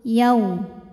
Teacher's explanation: Hadza yau, ada harfulin atau huruf lin, sebab ada waw sukun didahului harokat fathah. Maka kita bunyikan dengan lunak atau lembut.